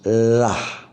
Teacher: cara penyebutan huruf lah itu ujung lidah dikeluarkan tanpa bersentuhan dengan gigi. Lah. Ya, panjangnya 2.